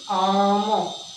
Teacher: जब हम आम शब्द को बोलते हैं तो अंत में स्वर रहित मकार का उच्चारण होता है। आम में ए ध्वनि नहीं है, तो इसको हम ये कह सकते हैं कि अंत में जो स्वर रहित मकार का उच्चारण होता है, जो होकर श्वास के एक ही आघात यानी झटके के साथ आम बोला जाता है।